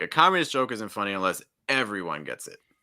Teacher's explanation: i would really stress communist here